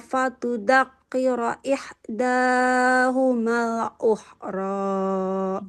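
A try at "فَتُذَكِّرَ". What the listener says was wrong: Ini nggak boleh fatudzakkiro ya. Huruf zal fatuzakkiro. Huruf zal ujung lidahnya kita tempelkan ke ujung gigi seri yang atas. Za. Za. Za fatuzakkiro.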